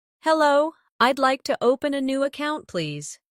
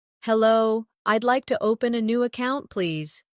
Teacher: Notice the stress on open and account so the purpose is clear.